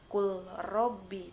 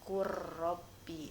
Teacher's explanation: ketika kamu membaca maka huruf yang pertama seperti tidak terbaca karena lebih dominan huruf yang kedua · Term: idgham mutajanisain